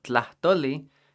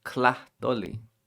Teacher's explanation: At the beginning of words, the TL sound is not too difficult. All you have to do is make sure you're not saying the K sound.